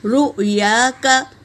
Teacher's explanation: یا میں الف مدہ ہے نا تو ایک الف کی مقدار کھینچیں گے، کاف کو جل پڑھیں گے۔